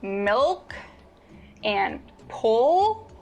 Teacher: when you produce the dark L the back of your tongue bunches so think about the words milk and pull the lighter L